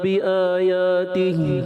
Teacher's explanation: اب جیسے آپ نے پڑھا بی آیاتی، اب بی آ کو بھی کھینچنا ہے، یا کو بھی کھینچنا ہے۔ اب ایک کھینچے ایک نہ کھینچے تو عجیب سا ایک وہ ہو جاتا ہے. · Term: مد اصلی